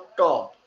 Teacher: ট যখন বলি তখন দেখেন ওই জিহ্বাটা তালু থেকে একটু সামনের দিকে এসে দাঁতের গোড়ায় বা মাড়িতে লাগতেছে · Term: মূর্ধাবর্ণ